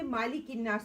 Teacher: मा को लंबा नहीं करना